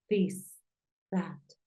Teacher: la th es como como una d como una Z no es tan fuerte como una t porque es un sonido dental